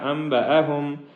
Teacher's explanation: نون ساکن اور آگے با ہے، جس کی وجہ سے اخفا ہوگا